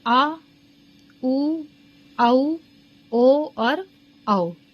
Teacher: जो हमारी जीभ होती है, टंग होती है, उसके पिछले हिस्से से जो बोले जाते हैं उन्हीं को बोलते हैं पश्च स्वर